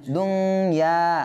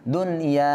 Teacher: গুন্না করতে হবে। কিন্তু এই ইদগামে বা গুন্নার হরফ একই শব্দ আসার কারণে এখানে গুন্না না হয়ে ইজহার হচ্ছে